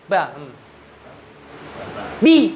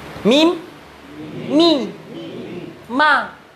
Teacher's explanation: kalau ba, mim, kedua bibir ketemu semuanya.